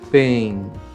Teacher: Como tem um N em seguida, o som fica nasal.